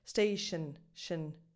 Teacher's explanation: Station, just go from sh to the N sound.